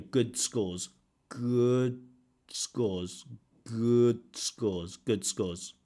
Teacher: that D can disappear